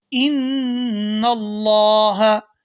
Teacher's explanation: یہاں نون مشدد پر غنہ کریں گے اور اس کے بعد لفظ اللہ کے لام کو پورا ادا کیا جائے گا کیونکہ لفظ اللہ کے لام سے پہلے زبر ہے۔